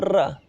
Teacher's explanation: लुंठित व्यंजन या प्रकंपी व्यंजन कौन सा होता है? ऐसा व्यंजन जो उच्चारण करते समय जीभ का तालु पर कई बार टक्कर के साथ उच्चारित होता है, जैसे र। आप र बोलेंगे तो आपको आपकी जीभ प्रकंपित होती है, देखो र होती है ना।